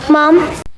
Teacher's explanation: Mom, the intonation goes up.